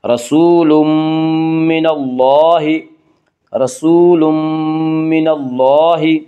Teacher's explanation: یہاں تنوین کے بعد یومنو کے 4 حرفوں میں سے میم آ رہا ہے اس لیے یہاں پہ ادغام بالغنہ ہوگا۔ رسول من اللہ، رسول من اللہ، من اللہ، اللہ کا لام یہاں پر پڑھا جائے گا۔